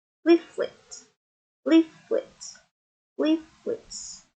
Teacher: penekanannya pada silabel yang pertama atau yang di depan.